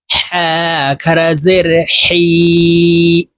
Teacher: উচ্চারণ হলকের শুরু থেকে উচ্চারণ করতে হবে হা খারা জের হি এই হার উচ্চারণ হলকের মধ্যখান থেকে উচ্চারণ হবে